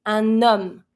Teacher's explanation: You're never going to pronounce the H. That's the first letter of the word.